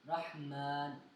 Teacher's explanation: اس کو پڑھتے وقت اس کو ناک میں نہیں لے کے جانا مان ایسے ناک میں نہیں لے کے جانا میم کو کیونکہ یہاں پہ غنہ نہیں ہو رہا نا اس وجہ سے اس کو ناک میں نہیں لے کے جانا رحمان.